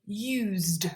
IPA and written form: juːzd (used)